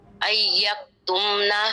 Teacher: میم کو صرف ظاہر کر دیں گے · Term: اظہار شفوی